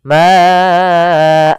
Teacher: Nah, ini tidak mantul dalnya, padahal huruf dal salah satu sifatnya adalah qalqalah, mantul